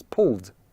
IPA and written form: pʊld (pull)